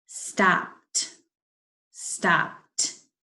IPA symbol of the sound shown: t